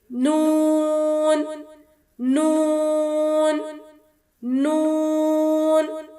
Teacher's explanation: زبان کے اگلے حصے کو اوپر کے سامنے والے 6 دانتوں کے مسوڑوں سے لگاتے ہوئے اور ہونٹوں کو گولائی کرتے ہوئے ادا کریں گے۔ نون، نون، نون۔